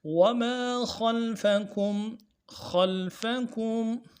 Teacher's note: کاف کو میم کے ساتھ ملانا ہے، میم ساکن غنہ ادا کریں گے